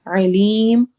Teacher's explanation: تنوین کے نون کو ہم واضح پڑھیں گے، کلیئر پڑھیں گے